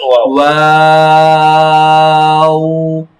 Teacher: ওয়াও উচ্চারণের সময় কিন্তু ঠোঁটটা গোল হয় যখন বলি নুন ওয়াও ওয়াও, ওয়াও ঠোঁটটা গোল অবস্থা থেকে আবার ছড়িয়ে আবার শেষ অবস্থায় আবার গোল হবে।